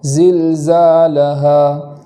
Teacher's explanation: اور آخر میں جو ہا پر الف مدہ ہے، ہا الف زبر ہا، تو وہاں وقف میں کھینچے بغیر وقف کریں گے، زلزالہا ایسا نہیں پڑھیں گے بلکہ ایک الف کے برابر صرف کھینچیں گے اور اس کو اس طریقے سے پڑھیں گے زلزالہا۔